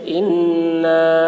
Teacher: انا، نون کے اوپر تشدید ہے، اس لیے نون کی آواز کو ناک میں لے جا کر ایک الف کی مقدار کھینچیں گے، اس کو غنہ کہتے ہیں